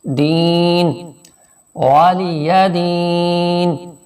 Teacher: یا ساکن سے پہلے زیر ہے، یہاں تھوڑا سا کھینچ کے پڑھیں